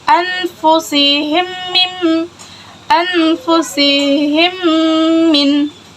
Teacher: Yang kedua, idgham mimi atau mutamassilailain. Dibaca dengan meleburkan kedua huruf mim tersebut menjadi satu dan didengungkan. Terjadi jika mim sukun bertemu dengan huruf mim.